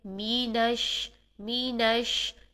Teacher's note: میم کی زیر کو بہت باریک انداز میں ادا کریں گے، پورا ادا کریں گے، یعنی ای کی ساؤنڈ لے کر آئیں گے، مینش۔ جب ہم نش کریں گے تو شین میں ہم پھیلی ہوئی منہ کے اندر ساری پھیلی ہوئی ساؤنڈ سے ادا کریں گے۔